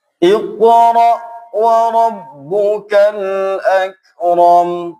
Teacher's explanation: Kalau kaf ini tipis tanpa harus memantulkan. Dan qaf cenderung lebih pangkal di pangkal lidah. Kalau kaf agak keluar.